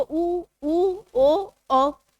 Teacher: एक वृत्त मुखी है एक अवृत्त मुखी। वृत्त मुखी मतलब जिनके उच्चारण में होठ पूरे गोल हो जाते हैं।